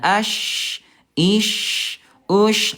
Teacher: dari segi suara huruf syin ayah bunda dia rakhawah. Khawah itu lemah suaranya mengalir dengan deras.